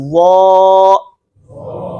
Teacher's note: وا کو ادا کرتے وقت یہ زبان کی جڑ اور اوپر والے تالو کے درمیان فاصلہ کم ہو گیا